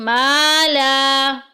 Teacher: ما اور لا کو ایک ایک الف کے برابر لمبا کریں گے